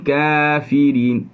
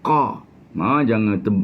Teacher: Kaf berada pada pertengahan di antara langit lembut dengan langit keras